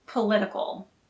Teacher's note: political has the stress on the second syllable